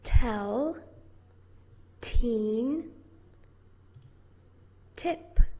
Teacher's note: And you push it out. It's a little explosive sound. It's very brief, and your voice box is turned off.